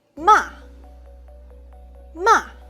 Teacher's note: The fourth tone is a falling tone. Some people feel it sounds a little bit angry.